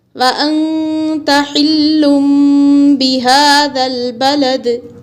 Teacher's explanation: وَأَنْتَ حِلٌّ بِهَذَا الْبَلَدِ، انت حمزہ نون زبر ان، یہاں نون کو چھپا کر پڑھیں گے کیونکہ نون ساکن کے بعد تا حروف اخفا کی ہے، تو نون کو چھپا کر پڑھنے کو اخفا کہتے ہیں۔